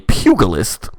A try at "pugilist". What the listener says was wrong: sorry what the g is soft